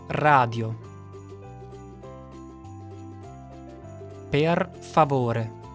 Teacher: the Italian R is not pronounced with the tongue in the back as it is in English but trilled at the alveolar Ridge